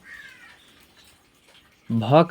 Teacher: भ का उच्चारण स्थान जो है ओट है अर्थात ओठ